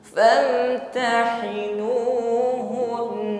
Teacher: Maka apabila biasanya kita berhenti pada huruf nun yang tidak bertasydid, famtahinuhun, seperti itu. Namun karena di sini nunnya ini bertasydid, maka dengungnya lebih terasa, ya. Jadi tidak hanya hun tetapi hun, famtahinuhun, ya, dengungnya masih terasa, ya, karena gunnah musyaddadah yang dibaca waqaf.